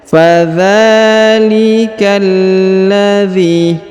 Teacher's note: huruf k langsung sambung masuk ke huruf lam yang berharakat tasdid